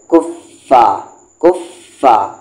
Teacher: سامنے کے اوپر والے دانت کو نیچے کے لپس میں ٹچ کرنا ہے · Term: فا کے مخرج